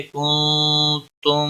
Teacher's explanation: کنتم نون ساکن کے بعد حروف اخفا کا تا آیا ہے. اخفا حقیقی ہوگا. غنہ کے ساتھ پڑھیں گے.